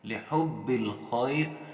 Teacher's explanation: یہاں خا کو ہم نے موٹا پڑھنا ہے کیونکہ یہ موٹے حروف میں سے ہے